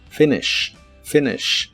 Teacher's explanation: Las letras I de esta palabra se pronuncian muy cortas.